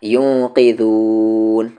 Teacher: نون ساکن کے بعد قاف اخفا ہوگا